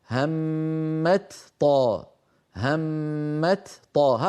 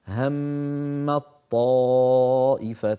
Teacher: المثال الثاني هم الطائفتان، أيضا هنا تاء وطاء، والتاء والطاء من المخرج نفسه، فالأصل أن نقول همت طاء، همت طاء، هكذا الأصل، لكنه ثقيل، فلذلك كانت العرب تحول التاء في همت إلى طاء ثم تدغم الطاء في الطاء التي بعدها فيصيران طاء واحدة مشددة يرتفع اللسان عنهما ارتفاعة واحدة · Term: الإدغام